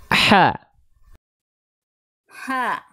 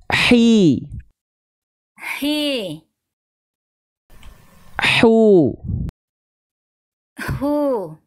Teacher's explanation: rasakan Ada bisikannya dulu keluar baru keluar vokal a i u-nya